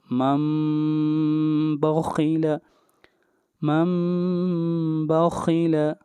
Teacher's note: نون ساکن کے بعد با آ رہا ہے تو یہاں پر اقلاب ہوگا، نون کو نہیں پڑھیں گے بلکہ یہاں پر میم کو پڑھا جائے گا